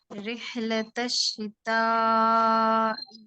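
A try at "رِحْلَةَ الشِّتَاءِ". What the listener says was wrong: ابھی بھی آپ ای پہ آ کے روکتے ہیں، اس کو لمبا کرتے ہیں میری بہن. ای ای ای ای پہلے کہیں، ای ای ای ای ای. رحلۃ الشتاء، رحلۃ الشتاء.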